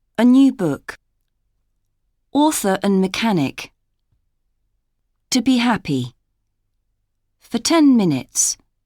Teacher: Many common words are often unstressed in phrases and pronounced with a schwa, sound.